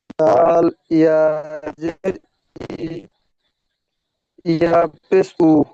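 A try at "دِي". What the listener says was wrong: দাল ইয়া জের দি হয়ে গেল, আবার ইয়া পেশ উ পড়ছেন কেন? এটা পেশ নয়, ওটা সাকিন বলা হয়, সাকিন। পেশ এরকম হয়, পেশ এরকম মুখটা মোড়া হয়।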